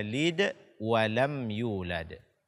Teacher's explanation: hukumnya adalah izhar syafawi dibaca dengan jelas matinya tanpa menambah dengung